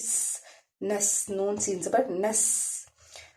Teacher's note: सीन जो है वो हरफ सफीरिया है और जब इसको अदा करेंगे तो सीटी की आवाज़ निकलेगी